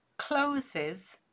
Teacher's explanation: Closes has an extra syllable because of the z sound there